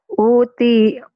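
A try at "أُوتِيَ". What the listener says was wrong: O-nya panjang.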